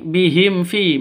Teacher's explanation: hukum mim mati bertemu dengan fa bacanya jelas terang karena izhar syafawi bukan ikhfa syafawi tapi izhar safa syafawi jelas bacanya tidak boleh disentak tidak boleh dipanjangkan.